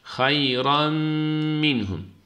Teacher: Minhum'da da izhar var boğaz harfi olduğu için. · burada da tenvindeki nunu mime idgam ettik.